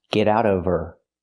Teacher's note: Now we need the V sound in of because we don't pronounce the H in her. We link the sounds. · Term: the H is silent